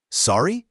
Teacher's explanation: You say it with a rising intonation to show you didn't hear or understand.